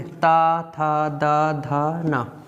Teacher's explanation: इनको बोलेंगे तो क्या है हमारी जीव जो है दांतो में टच करेगी